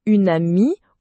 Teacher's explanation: le n se déplace vers le début du mot suivant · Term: enchaînement